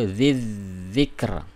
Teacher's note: ini huruf Zal itu dilepas ya dan ujung lidah ketemu ujung gigi dua seri atas